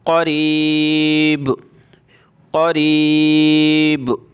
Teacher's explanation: قاف کو موٹا کریں گے